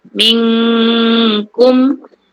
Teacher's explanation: Kita sembunyikan non. Gitu. Dan cenderung kepada kap. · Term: ifak